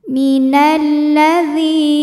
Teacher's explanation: dzi mad tabi'i zahiri karena ada ya sukun didahului harokat kasrah, maka dzal panjang 2 harokat · karena alif lam menghadapi huruf Syamsiyah yaitu lam maka alif lam tidak dibaca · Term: alif lam syamsiyah